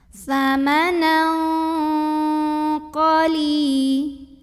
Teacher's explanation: Berikutnya di sini ada ikhfa ab'ad. Karena ada tanwin fathah yang ketemu dengan huruf qaf. Maka tanwin fathahnya ini dibunyikan samar-samar. Jadi tidak jelas samanan ya, bukan samanan tapi samanal, bunyinya ang ya, dan tebal karena qaf huruf tebal.